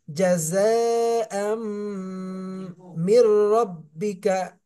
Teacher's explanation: জাযাআম, এটা ইদগামে বা গুন্না, তানবিনের পরে ইদগামে বা গুন্নার হরফ মিম এসেছে, এই জন্য মিলানোর সাথে সাথে গুন্না করতে হবে